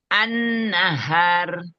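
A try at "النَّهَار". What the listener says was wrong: Hanya 2 harokat. Sekali lagi. 3 ketukan lamban. An-nahar.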